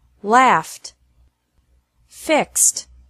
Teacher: e d is pronounced like t after verbs ending with an f or an x sound